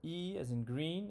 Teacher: when i say e my tongue moves to the front and to the high to the top of my mouth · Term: front high vowel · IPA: /iy/